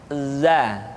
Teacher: diucapkan dengan cara ujung lidah kita berada di antara dua gigi seri bagian atas dan bagian bawah. Za, menyerupai dengan pengucapan huruf Z di dalam huruf Latin. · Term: huruf za